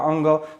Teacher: मुख और नासिका दोनों की सहायता से हम लोग पंचम वर्ण का उच्चारण करते हैं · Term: अनुनासिक वर्ण